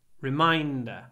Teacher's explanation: And when you say reminder, try to hold the N. Reminder. There's lots of N in it.